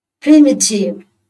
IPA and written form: ˈprɪmətɪv (primitive)